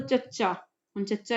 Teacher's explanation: ਜੀਵ ਕਠੋਰ ਤਾਲੂ ਨੂੰ ਸਪਰਸ਼ ਕਰ ਰਹੀ ਹੈ ਹਨਾ ਉਥੋਂ ਸਾਹ ਨੂੰ ਬਾਹਰ ਆਉਣ ਚ ਜਿਹੜੀ ਹੈ ਉਹ ਰੁਕਾਵਟ ਹੁੰਦੀ ਹੈ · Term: ਤਾਲਵੀ ਧੁਨੀਆਂ